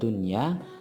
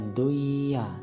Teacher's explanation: Ciri utama yang kedua yaitu apabila huruf nun yang disukun dan huruf tersebut tersambung, atau dalam satu kata dengan huruf idgham biguna tadi, maka hukum bacaan yang berlaku adalah hukum idhar wajib dan harus dibaca jelas atau terang, tidak boleh lagi mendengung